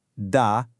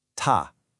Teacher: That little burst of air is called aspiration. And in Mandarin, that puff of air is literally the only difference between the D sound and the T sound.